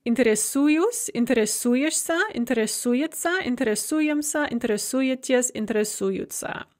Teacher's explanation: We're going to drop that ova and replace it with an u, and the stress is going to fall on the u.